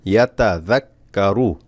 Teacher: জাল পাতলা হবে, পাতলা হয়ে কাফকে ধরবে